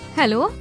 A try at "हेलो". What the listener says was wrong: नहीं, थोड़ा सा धीमा, जैसे किसी को रिझाना चाहती हो। हेलो।